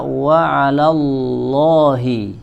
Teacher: huruf lamnya dibaca tipis, ya, tidak dibaca tebal